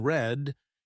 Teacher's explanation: when you pronounce the sound R in red, your tongue doesn't touch the top of your mouth. It slightly curls back.